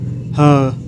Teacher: जो ह है, ह वर्ण है, इसका उच्चारण स्थान स्वर यंत्र है।